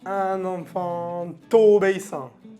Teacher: Y no se dice un enfant obéissant. No se pronuncia la T. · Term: liaison